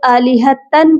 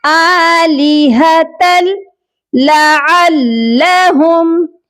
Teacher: یہاں پر تا کو لام کے ساتھ ملا کر پڑھیں گے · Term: ادغام